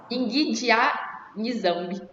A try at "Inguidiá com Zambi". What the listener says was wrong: Esse N no Kibundo é como se fosse o nosso H, não tem um som. Início de palavra. Então, embora esteja em Zambi, mas se pronuncia Zambi. Então, Inguidiá com Zambi.